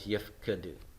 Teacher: It would have been yif kodu, but the shurik takes the dalet away and the holum has to reduce to a vocal Shiva here